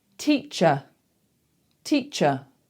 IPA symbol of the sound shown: ə